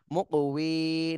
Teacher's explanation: ওয়া মা তা, আইন লাম দুই জবর আল, ওয়া মা তা আল, লাম লাম জের লিল, ওয়া মা তা আল লিল, মিম কপেশ মুক, ওয়াও ইয়া জের উই, মুক উই, কফে কলকলা করতে হবে, মুক উই, নুন জবর না, মুক উই না।